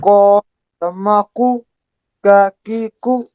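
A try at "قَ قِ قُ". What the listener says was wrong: Make it heavy. Make it heavy. The sound is good, but you have to make it more heavy. Qaqiqu.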